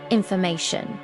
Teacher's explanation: stress on third syllable.